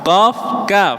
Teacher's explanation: pangkal lidah ada paling belakang qof dan kaf qof kaf ngoten nggih berarti 12 maju tengah lidahnya naik.